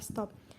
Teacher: bunyi T dalam bahasa Inggris yang biasanya diucapkan secara apikoalveolar tetapi bila terdapat sebelum bunyi S, maka menyesuaikan diri dengan artikulasi lamino-alveolar S menjadi lamino-alveolar T dalam kata stop